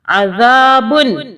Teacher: اب یہ جو ذال ہے اس کو اپنے زال نہیں پڑھنا سیٹی کی آواز میں ایسے نہیں پڑھنا. اس کو ہم نے زبان کو دانتوں میں ہلکا سا رکھ کے زبان کو تھوڑا سا باہر کر کے ہلکا سا اس کو سافٹلی ادا کرنا ہے.